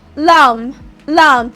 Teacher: when I pronounce the word lamb, I do not hear the B sound. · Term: silent B